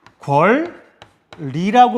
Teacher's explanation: 니은과 리을이 만났을 때 뒤에 있는 리을의 영향을 받아서 앞에 있는 니은이 리을로 바뀝니다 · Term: 유음화